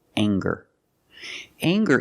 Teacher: we have the nasal um sound plus the hard G the G sound together